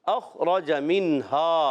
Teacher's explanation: نون ساکن با ہا آ رہا ہے، اظہار حلقی ہوگا، غنہ نہیں کریں گے